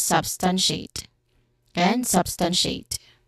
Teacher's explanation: The second syllable is the stressed syllable, stun.